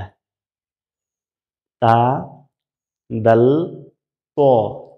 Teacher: জিহ্বার আগাটা উপরের দাঁতের গোড়ায় ভিতরে লাগিয়ে